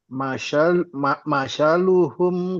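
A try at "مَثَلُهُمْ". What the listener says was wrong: Bukan sa. lidahnya keluar dulu.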